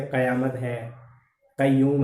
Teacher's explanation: तो कै ख ग जिनके नीचे तलबिंदु है, नुक्ता लगा हुआ है, ये अरबी फारसी शब्दावली में आते हैं और इनका उच्चारण भी करते हैं तो जीभ के एकदम पीछे से होता है। सामान्य कै का उच्चारण कंठ से होता है और इस कै का उच्चारण कै एकदम पीछे से होता है, जोर आता है।